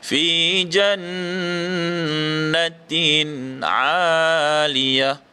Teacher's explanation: dengungnya dekat fi jannah, itu adalah hukum wajibul gunnah